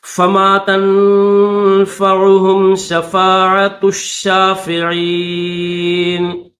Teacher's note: تا کو شین کے ساتھ ملائیں گے، تا شین پیش تش، شین کھڑا زبر شا، تشا۔